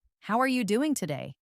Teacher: Notice how the voice typically rises a bit at the end and how the word doing is often stressed.